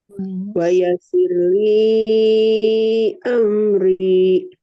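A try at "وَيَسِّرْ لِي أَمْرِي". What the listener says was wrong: Bagus. Li-nya udah 4 harokat.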